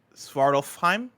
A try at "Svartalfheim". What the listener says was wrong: No, I think the F is silent. I think.